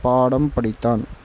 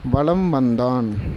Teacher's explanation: இந்த வார்த்தைகள்ல மகர மெய்யெழுத்து தனக்குரிய அரை மாத்திரை அளவில் முழுமையாக ஒளிக்கிறது. அதாவது ஏற்கனவே இருந்த அரை மாத்திரை அம்மா அப்படின்ற இடத்திலயும் அரை மாத்திரைதான் இந்த இம்முக்கு.